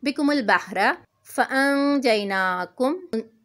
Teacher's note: نون ساکن کے بعد جیم آ رہے ہیں، یہاں پہ ہم نے اخفا کرنا ہے